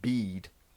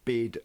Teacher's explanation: bead is a higher vowel than bid